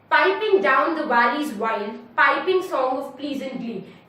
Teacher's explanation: we have a strong syllable followed by a weak syllable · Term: trochaic